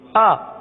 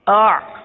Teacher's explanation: حمزہ حلق کے نیچے والے حصے سے ادا ہوتا ہے، آئین اس سے اوپر والے حصے سے ادا ہوتا ہے · حمزہ کے اندر سختی ہے آ، اور عین کے اندر نرمی ہے آ. تو ان دونوں میں بہت فرق ہے.